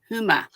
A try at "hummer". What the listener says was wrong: Hummer. It's the R on the end. Like humming, but hummer.